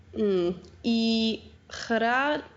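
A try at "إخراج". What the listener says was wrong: Yes, ikhraj. Very nice.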